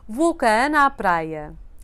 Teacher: The word com, when followed by definite or indefinite articles, becomes usually less nasal.